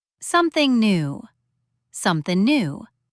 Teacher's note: The G becomes just an N sound.